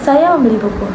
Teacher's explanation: Terdapat tekanan rendah pada kata buku. Artinya ia membeli buku bukan koran ataupun majalah. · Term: tekanan biasa atau sedang